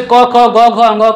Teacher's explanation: क, ख, ग, घ, अंग का जो है वह कंठ है